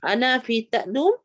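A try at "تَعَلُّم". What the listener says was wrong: Ta'allum, ada lam, ada sabdu. Ta'allum. Ta'allum. Ta'allama macam tahajud.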